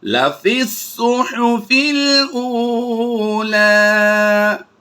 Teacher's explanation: بل تؤثرون الحیات الدنیا والآخرة خیر وأبقى إن هذا لفي الصحف الأولى إن هذا لفي الصحف الأولى۔ یاد رہے فا کو صاد کے ساتھ ہم ڈائریکٹ ملائیں گے، جبکہ یا، الف اور لام یہ 3 حروف بالترتیب جو ہیں یہ سائلنٹ ہوں گے